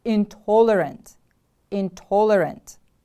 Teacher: intolerant the stress is on the second syllable